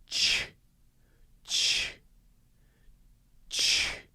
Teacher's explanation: I'm starting by blowing air through my teeth, and then my teeth come slightly apart. My mouth comes slightly apart.